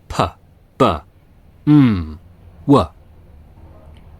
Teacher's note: Bilabial, using both lips.